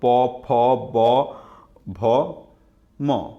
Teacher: ওষ্ঠ শব্দের অর্থ হচ্ছে ঠোঁট। আপনি প উচ্চারণ করেন, 2 ঠোঁটের মাঝখান থেকে এটি উচ্চারিত হয় বলে এগুলোকে ওষ্ঠবর্ণ বলা হয়ে থাকে